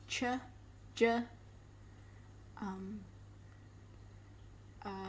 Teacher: You've got affricates, which are, they start with a stop and become a fricative. So this sounds like ch, j.